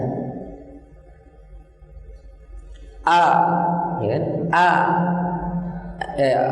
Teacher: Hamzah ini adalah satu-satunya huruf dalam pandangan ilmu aswat modern, ulama pakar ilmu aswat modern, satu-satunya huruf yang pita suara tertutup rapat. Jadi pita suara itu tertutup rapat sehingga tidak mungkin ada yang keluar.